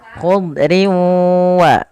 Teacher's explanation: wau sehingga bukanl lagi dibaca khud khudrin WA abqi tapi khudria sambil ditahan dengan guna sepanjang dua harakat